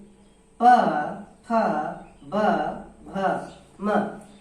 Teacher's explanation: इनका उच्चारण स्थान हो जाएगा ओठ या ओष्ठ भी कहते हैं